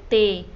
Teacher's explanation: ज़बान की नोक से ऊपरी दांत पर तनफ़ुसी बहाव यानी सांस की हवा को रोका जाता है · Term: दंदानी